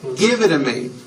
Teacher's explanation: the only big change comes from the T's being pronounced as D's. And this happens because the T's fall between 2 vowel sounds. If you remember in American pronunciation, when T's fall between two vowels, they become voiced and are pronounced as D's.